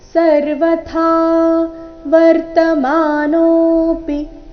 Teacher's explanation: ಥಾ ಇಲ್ಲಿ ಮಹಾಪ್ರಾಣ ದೀರ್ಘ, ತಾ ಬೇಡ, ಥಾ ಎಂದು ಬರಬೇಕು.